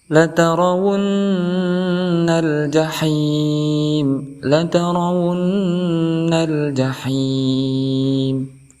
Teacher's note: Di ayat yang ke-6 ini kita bertemu dengan latarawunnal. Di sini ada nun yang diharokati dengan tasdid, maka dihukumi sebagai ghunnah musyaddadah. Maka cara membacanya kita dengungkan 2 harokat.